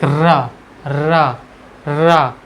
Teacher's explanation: लुंठित वर्ण वे वर्ण होते हैं जिनके उच्चारण में जीभ मुख के बीचोंबीच कंपित होती है। कंपित होती है यानी बहुत तेजी से लहराती है।